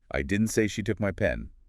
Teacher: Now stress on took. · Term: primary stress